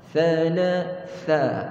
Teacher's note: Tha ni hujung lidah kita sentuh hujung gigi depan kita. Sama macam kita sebut tha.